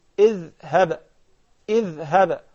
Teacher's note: you will stick the tip of your tongue out because this is a letter dhal